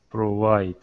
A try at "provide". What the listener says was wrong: Oh, that's still in the W. Get your teeth on your lip. Provide. If you also, another way to practice is to try to say it with an F sound. Provide.